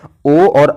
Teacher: ओ और औ का उच्चारण यानी कंठ तथा ओष्ठ दोनों के माध्यम से होता है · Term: कंठोष्ठ